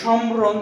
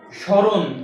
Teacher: শব্দের শুরুতে যদি মফালা থাকে তাহলে সেই মফালার কোন উচ্চারণ হবে না